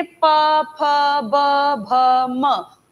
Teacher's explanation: हर एक में ओष्ठ का, होठ का यूज किया, इसलिए इन्हें ओष्ठ व्यंजन भी कहते हैं